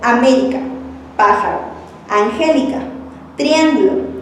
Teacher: tienen la antepenúltima sílaba más fuerte y las dos últimas débiles. Al tono agudo corresponde la sílaba acentuada y al tono grave a las no acentuadas. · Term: esdrújulas